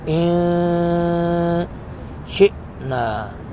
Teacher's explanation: شین پر تھوڑا سا جھٹکا لگائیں گے